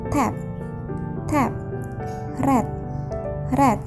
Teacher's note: Oral passage is blocked by pressing the tongue tips against the alveolar ridge.